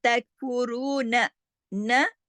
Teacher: रॉ सिर्फ मोटा पढ़ा जाएगा पेश की वजह से और दो हरकत खींचा भी जाएगा